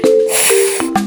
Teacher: It's voiceless. There is no buzz in your throat. We also call it the polite sound.